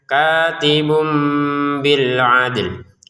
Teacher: Kemudian ditambahkan sedikit bunyi "mim", sehingga tidak lagi dibaca sebagai 'katibun' tetapi 'katibum' dengan bunyi sengau